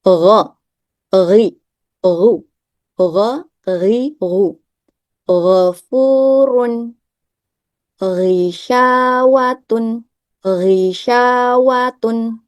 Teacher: Alistiala karena pangkal lidah yang naik. Jadi hurufnya terbaca tebal. · Huruf gain, makharijul huruf gain ada di tenggorokan bagian atas, yaitu akar lidah yang bertemu dengan langit-langit yang berdaging. Dapat dilihat pada gambar, posisi akar lidah ada di sini. · Akal lidah bertemu dengan langit-langit yang berdaging. Kemudian huruf gin memiliki sifat aljahr atau tertahannya udara. Kemudian arrakhaah mengalirnya suara. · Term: huruf ghain